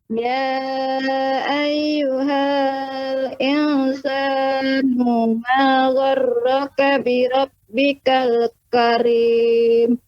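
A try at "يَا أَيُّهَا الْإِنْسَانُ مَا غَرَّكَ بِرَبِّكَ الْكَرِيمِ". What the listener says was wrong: Ya, di sini pada insanu ma. Ya ayyuhal insanu ma. Ya, perhatikan panjang pendeknya. Gha-nya lebih ditepatkan lagi pembacaannya pada makhrajnya. Gha. Ma gharraka bi rabbikal karim.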